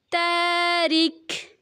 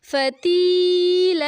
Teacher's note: اگر ہم وقف کریں تو آخری حرف کو ساکن کر کے حرف مدہ کو 4 سے 5 برابر کھینچیں گے